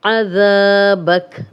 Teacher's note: ذال کو نرم پڑھیں گے، سیٹی کی آواز نہیں آئے گی اور 2 حرکات لمبا کریں گے.